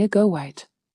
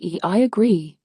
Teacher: The second rule is linking vowel to vowel, where your mouth naturally inserts an intrusive w or y sound to connect two vowels smoothly.